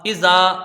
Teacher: حمزہ کے نیچے زیر ہے، اس کو جلدی پڑھیں گے. زال میں الف مدہ ہے، اس کو کھینچ کے پڑھا جائے گا، ایک الف کی مقدار